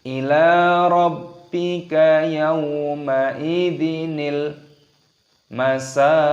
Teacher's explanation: Sinya berharokat fathah, ada tanda alifnya, panjangkan 2 ketukan matobi'i, dan di sini qafnya berharokat dhammah. Ketika berhenti tanda waqaf maka dimatikan qafnya dan dipantulkan suaranya.